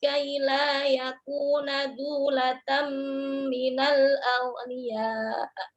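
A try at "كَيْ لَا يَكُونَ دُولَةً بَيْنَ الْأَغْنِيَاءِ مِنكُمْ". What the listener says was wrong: Bainal. Bainal, bukan minal. Dulatam bainal. Aghniyai. Aghniyai bukan A ya.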